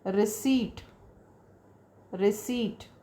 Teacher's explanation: P is silent here. No sound of P, right?